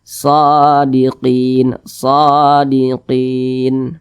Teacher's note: dibaca panjang Karena ada Alif kecil berdiri di atasnya shodiqin shodiqin Mad Thobi'i panjangnya dua harakat atau kira-kira dua ketukan · Huruf shad dibaca panjang karena ada alif kecil berdiri di atasnya. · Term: Matobi'i